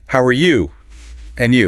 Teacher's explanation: when Americans say, and you, in a casual greeting, they usually use a rising intonation